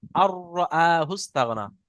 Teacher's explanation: আর নুন সাকিনের আওয়াজকে আহ, হ্যাঁ, তার নুন সাকিনকে র এর সাথে মিলিয়ে বিনা গুণনায় তাড়াতাড়ি পড়তে হয়, মিলিয়ে একে ঈদগামে বিনা তাম গুণা।